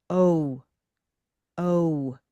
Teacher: It's rather o with the lips moving into a more closed position. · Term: Rose